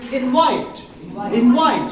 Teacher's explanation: Invite as a noun. When you use it as a verb, its pronunciation will automatically shift to the second syllable.